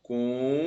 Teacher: esse U forma hiato com E, com a vogal anterior. Ele está sozinho na sílaba. É a sílaba mais forte. Então é a regra dos hiatos, que ele forma hiato com a vogal anterior.